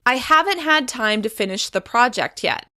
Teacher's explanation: I'm stressing the word haven't in order to make it extra clear